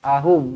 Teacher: wa dibaca dengan panjang di sini empat ataupun lima harakat ahum pastikan kita baca betul-betul ahum bukan ahom ahom eh ahum